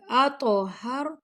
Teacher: تو کو موٹا بھی پڑھیں گے اور قلقلہ بھی کریں گے